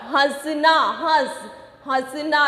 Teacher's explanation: इसका उच्चारण जब हम करते हैं मुंह और नाक दोनों से हवा बाहर आती है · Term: अनुनासिक